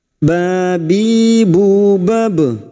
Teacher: Huruf ba sukun yang mati asli di tengah kalimat, qalqalah sugroh. Jangan lupa dipantulkan.